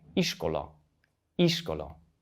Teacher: in Hungarian, the stress is almost always on the first syllable, like in this word here, iskola, iskola.